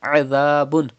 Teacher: Pronounce ain from the middle part of your throat and pronounce dhal without whistle sound